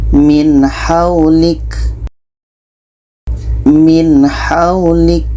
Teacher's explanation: Nun jelas, ha jelas dan tidak ada dengung. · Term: izhar halqi, izhar halki